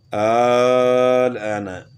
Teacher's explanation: حروف مدہ کے بعد حرف جزم ہو تو اسے مد لازم کلمی مخفف کہتے ہیں. اس کی مقدار 5 سے 6 الف کے برابر ہے